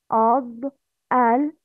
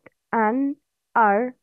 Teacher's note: Yes, that means dad, lam, noon, ra. The sound of these letters come from the sides of the tongue.